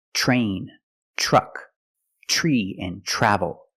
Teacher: another situation where T makes a CH sound is TR R when you have TR R together in any situation you can pronounce it tur but usually we don't we pronounce it ch ch plus the r sound